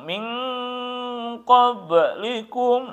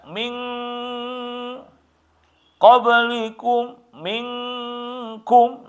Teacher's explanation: kalau qaf sama kaf ya berada di hadapan nun mati atau tanwin itu ikhfakan, ya, disembunyikan, disamarkan, suara nunnya bahkan jauh. Ya, min qablikum, minkum, itu kan jauh. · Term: ikhfa abad